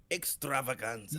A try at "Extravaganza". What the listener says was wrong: You gotta roll the R's.